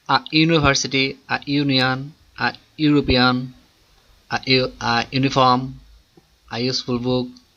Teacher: These words university, union, one begins with a consonant sound, that of you or wa.